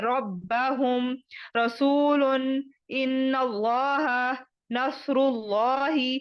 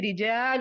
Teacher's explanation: پیش ہو تو را اور لام کو موٹا یعنی تفخیم موٹا کر کے پڑھیں گے